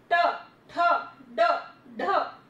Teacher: जो टंग है, जो जीभ है हमारी, थोड़ी सी ट्विस्ट होकर के ऊपर जो ऊपर वाला हिस्सा है वहां टच कर रही है। ट, ठ, ड, ढ, बोल के देखिए। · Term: ट वर्ग